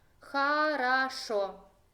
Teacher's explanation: En caso de esta palabra, el acento cae en la terminación, la última sílaba, entonces las primeras 2 las voy a leer como A, entonces O sin acento es A.